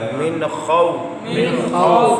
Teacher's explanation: نون ساکن کے بعد حروف حلقی میں سے خا آ گیا، یہاں بھی غنہ نہیں کریں گے، اظہار کریں گے